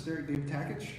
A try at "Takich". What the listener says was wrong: The T is silent. Catch.